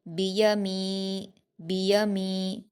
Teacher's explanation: या पर हरकत है, इसको भी जल्दी पढ़ेंगे। मीम पर या मद्दा है, इसको दो हरकत खींचेंगे। बियमी, बियमी, बियामी नहीं कहना इसको, क्योंकि या पर हरकत है, तो इसको आप बियमी पढ़ेंगे।